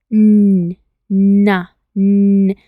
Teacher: voiced bueno Qué significa Esto está en inglés voiced significa que si colocamos nuestra mano sobre nuestra garganta y decimos na podemos sentir una vibración